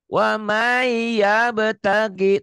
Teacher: Bunyi nun mati, bunyi N-nya hilang. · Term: Idgham biguna